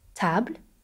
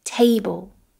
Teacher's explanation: Now again, just like the letter D, the English T is much stronger than the French T. Again, in French, when we pronounce the letter T, the tongue touches the back of the teeth. And in English, it touches a little bit further back on the roof of the mouth.